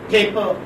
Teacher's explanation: First pa is aspirated and second pa is not.